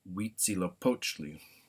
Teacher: And again, TL at the end of the word is either T or TLA. Also, the accent is on the next to last syllable